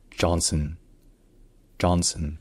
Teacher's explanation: l'accent tonique est sur la première syllabe. La première voyelle n'est pas un A comme en français, mais plus proche d'un A, donc comme un A et au fond de la bouche.